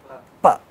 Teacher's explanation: So the flow of the air is stopped and released at lips, right? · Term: bilabial sounds